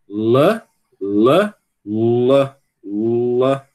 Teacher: Você tem que dar uma subidinha, tem que levantar um pouquinho a parte de trás da língua para dar essa coloração, esse som de U ao seu L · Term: L escuro